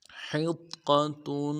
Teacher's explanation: حا کو موٹا ادا کرنا ہے، گہرائی سے ادا کرنا ہے، حا کو قا کے ساتھ ملانا ہے، قا کے اوپر تشدید ہے، زور دیں گے.